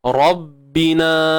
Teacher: ra tebal baris atas, ba bersabdu, jangan lantun, tuan-puan.